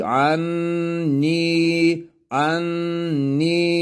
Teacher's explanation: burayı E bir elif miktarı uzatıyoruz